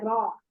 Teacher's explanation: 4 दांत के पीछे रे पढ़ा जाता है